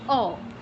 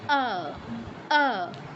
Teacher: ঠোঁট গোল করা যাবে না, দুই পাশে প্রসারিত হতে হবে ঠোঁট দুটো। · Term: সংস্কৃতে আ